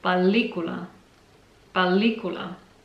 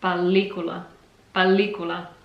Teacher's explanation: it sounds like an extended or prolonged L. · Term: long L